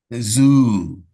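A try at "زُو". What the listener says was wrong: Zoo. A bit longer, a bit long. So try not to have that. You have this slight su sound to seen, which is very common for students. But it's more of a buzzing sound. Zoo, zoo.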